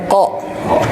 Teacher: itu bapak-bapak semua nggak boleh dibaca dibarengi dengan udara yang dikeluarkan Memang secara tabiat dan karakter huruf kok ketika dibacakan itu tidak mengeluarkan udara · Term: huruf qaf